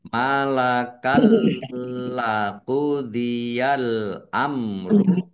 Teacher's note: Bacaan idgham bila ghunah. Masuk dengan tidak mendengung langsung masuk ke huruf lam dan tidak mendengung. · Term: idgham bila gunnah